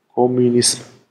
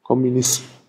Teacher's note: Also das ist ein exotischer Laut, den wir auf dem Deutschen nicht kennen. Also ein M, bei dem die Stimmlippen nicht vibrieren, sondern einfach nur die Luft durch die Nase fließt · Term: M stimmlos